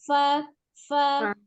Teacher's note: huruf fa adalah al-hams ya, ada nafas mengalir, berhembus ketika mengucapkan huruf fa. ada aliran nafasnya fa, bukan fa, ya, tapi fa.